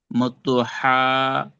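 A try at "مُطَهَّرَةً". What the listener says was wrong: জি, টান হবে না, আয়াতের শেষে যেহেতু গোলতা আসছে, কি করে পড়তে হবে? হা সাকিন করে পড়তে হবে। মুতাহহারা।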